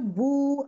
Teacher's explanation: मेरा जबान जो है थोड़ा रेज हो रहा है, मेरे होठ गोल हो रहे हैं